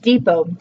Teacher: it ends in a T, but we don't pronounce it